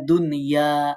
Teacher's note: এখানে দুনিয়া পড়তে হবে কোন ধরনের গুন্না করা যাবে না